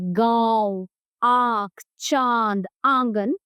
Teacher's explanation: अनुनासिक, इसका उच्चारण नाक और गले दोनों से होता है